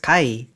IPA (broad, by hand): ka.i